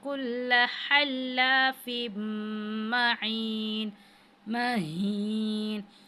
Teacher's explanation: अब तनवीन के बाद मीम आ रहा है, तो यहाँ पे भी जो है हरूफ यरमलून में से है, तो यहाँ पे गुन्ना करेंगे इदग़ाम की सूरत में